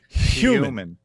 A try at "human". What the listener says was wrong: Human. What? You can't say the hard H sound.